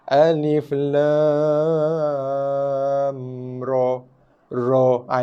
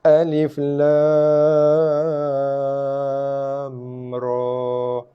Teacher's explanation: Ra tak ada tanda bacaan panjang, maka kita gunakan formula yang ketiga dibaca dengan baris atas 2 harakat.